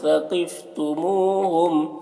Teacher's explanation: واو مدہ ہے، اسے ایک الف کے برابر کھینچ کر پڑھیں گے